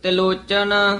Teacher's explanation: ਇਹ ਤਿਲੋਚਨ ਬੋਲਣਾ ਹੇਠਾਂ ਰਾ ਲਾ ਕੇ ਨਹੀਂ ਬੋਲਣਾ